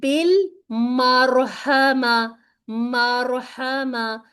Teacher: हा को आपने पतला ही पढ़ना है, क्योंकि ये मोटे उसमें तो है नहीं हरूफ में, तो उसको मोटा करने की खुद से भी कोशिश नहीं करनी, बाज़ हम हलक से निकालने की कोशिश में इन हरूफ को मोटा कर देते हैं, ठीक है।